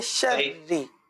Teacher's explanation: شری نہیں پڑھیں گے، شری غلط ہے، شری، اور را کو باریک پڑھ دیں. صحیح ہے، را کی باریک ادائیگی ہوگی کیونکہ را کے نیچے زیر ہے اور را مشدد اپنی حرکت کے مطابق پور اور باریک ہوتی ہے.